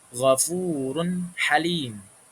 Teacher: Tadi huruf idhar itu ada ha, ghafurun halim. Jadi run itu dibaca jelas, enggak run halim, tapi jelas run halim